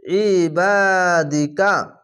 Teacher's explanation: আইনটিকে মোটা করে গলা চিপে পড়বেন। আইন জের ই, বা আলিজার বা, ই বা দাল জের দি, ইবাদি, কাব যাবার কাব, ইবাদিকা, ইবাদিকা।